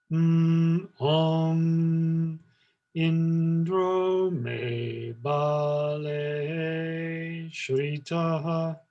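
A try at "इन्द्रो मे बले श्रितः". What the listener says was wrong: You just went a little bit too low. Indro me bale me.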